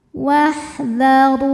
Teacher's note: Huruf ro dibaca secara tafkhim karena ro berharokat dhammah, maka ro dibaca dengan tebal. Wahdharu. Ru hukumnya mad tabi'i zahiri.